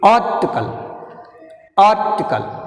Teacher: you pronounce first syllable more force. ఏం లేదు ఇక్కడ మీరు గుర్తుపెట్టుకోవాల్సింది ఒకటే, ఫస్ట్ సిలబుల్ని గట్టిగా పలకాలి, రెండవ సిలబుల్ని స్లోగా ఫాలింగ్ సౌండ్ చేయాలి.